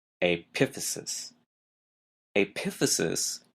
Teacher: notice the stress is in an odd place the second syllable